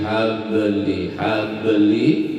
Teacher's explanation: Habli, li-nya kenapa dipanjangkan? Karena ada ya mati, itu hukumkan mad tabi'i.